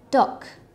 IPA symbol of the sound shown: k